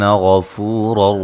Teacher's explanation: غین کو موٹا ادا کریں گے